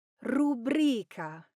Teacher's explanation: The correct pronunciation is Rubrica. Now the stress falls on the second syllable